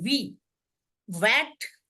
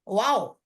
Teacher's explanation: जब आप डब्ल्यू बोलेंगे तो कुछ नहीं होगा, वाओ, उसके पहले आपका ऊ जैसा मुंह बनेगा और निकलेगा आ